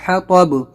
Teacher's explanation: حا نکالیں گے، طا موٹا کریں گے، با پہ قلقلہ